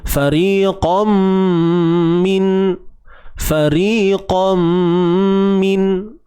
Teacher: Tanwin bertemu mim. Idgham, masukkan bunyi tanwin ke dalam mim bi gunnah. Serta dengung, dengan dengung. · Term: idgham bi gunnah